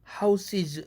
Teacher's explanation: 그러면 당연히 houses 해야 되겠죠. 복수형 es는 당연히 이 모음의 영향을 받아서 es 복수형 마지막 s는 z로 되는 것은 당연하죠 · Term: 역행동화